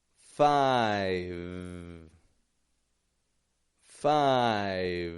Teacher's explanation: I'm only holding that V position, letting the sound fade.